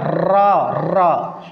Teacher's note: वह वर्ण जिसके उच्चारण में विशेष कंपन हो